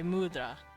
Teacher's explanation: this is technically spelled mudada, but they kind of don't pronounce the da part. They just say mudra. They the a kind of drops over time.